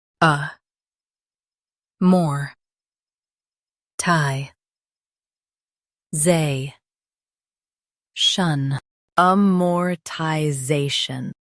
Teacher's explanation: Stress Zay and keep shun light.